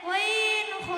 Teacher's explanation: 3 নম্বর মাখরাজ হলকে শেষ হইতে ওয়াইন খ